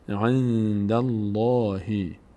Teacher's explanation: قبل از لفظ جلاله فتحه وجود داره به همین خاطر لفظ جلاله پر خوانده میشه